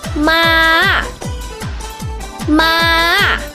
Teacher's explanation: The fourth tone falls from the very top to the very bottom. You could just start from the end of ma and goes down to the lowest pitch, just like ma, ma.